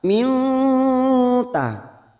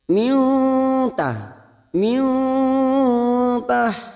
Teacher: tajri RI kasr bertemu Ya Sukun dua harakat kita panjangkan RI nun sukun bertemu ta Ikfa Hakiki kita samarkan